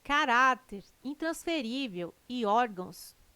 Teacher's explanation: Caráter, intransferível e órgãos têm sua sílaba tônica na penúltima sílaba. São paroxítonas.